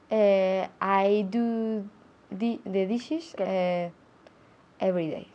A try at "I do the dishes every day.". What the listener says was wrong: I thought I heard an S. I heard an S every day. I do the dishes every day. I do the dishes every day. I do the dishes every night, every morning, every afternoon. It's always in the singular because every is todos. Todos los días, every day.